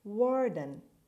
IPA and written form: wɔːrdn (warden)